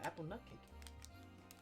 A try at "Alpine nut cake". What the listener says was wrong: It's Alpine. You said apple.